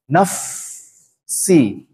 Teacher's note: jadi bibir bawah bertemu dengan gigi seri atas